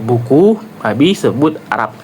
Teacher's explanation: seperti p, sama seperti p ya, huruf p, tapi dengan getaran pita suara. Bergetar ya. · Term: hambat bilabial bersuara